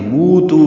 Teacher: موتو واو مدہ اور تو وہ بھی واو مدہ ہے، موتو دونوں برابر لمبے کریں گے